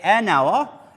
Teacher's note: I do not hear the consonant H, okay? So, it is silent, it is mute. So, I say an hour and not a hour, because many pupils think that this word begins, since it begins with a consonant, I have to put the indefinite article but it is not true.